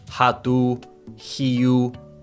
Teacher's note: the thing to remember is that an O at the end of words is pronounced with an U sound.